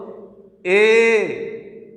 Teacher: দেখো এ এবং ওই উচ্চারণের সময় কণ্ঠ প্লাস তালুর ব্যবহার হয়। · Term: কণ্ঠ তালব্য বর্ণ